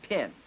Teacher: It's a voiceless bilabial stop, the sound in pin according to what we've just learned. In addition, it's fortis that is there's a strong amount of muscle contact when we say the sound in pin.